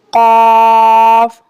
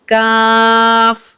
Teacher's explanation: نقطے والے قاف حرف مستعلیہ کا حروف ہے، اس کو ہم پر یعنی موٹا پڑھیں گے اور کاف کو ہم باریک پڑھیں گے